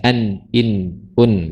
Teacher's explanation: Mau dia berharakat, mau dia bertasydid, mau dia sukun, karakternya sudah punya sifat gunah, dengung. Artinya dia masuk ke rongga hidung. Lah, kalau nunnya kita rongga hidung kita tutup, pasti baca nun tidak sempurna.